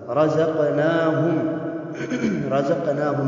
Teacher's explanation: رزقناہم میں میم ساکن ہے اور میم ساکن کے بعد حرف یا آیا ہے، یہاں میم کا اظہار ہوگا